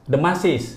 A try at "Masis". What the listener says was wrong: Bukan, nggak pakai D, Masis.